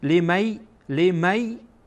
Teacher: المهم این که بعد از نون ساکن در اینجا یا آمده و یا از حروف ادغام هست، یعنی این که نون را گویایی که ما اصلا حذف میکنیم و مستقیما میم را با یا وصل میکنیم